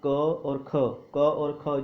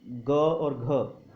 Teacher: सघोष अर्थात स्वर तंत्रियाँ आपस में कंपन करती हैं। पता ही होगा क और ख जो है वो अघोष में आते हैं, और ग और घ, ठीक है, जे सघोष या घोष इसको कह सकते हैं।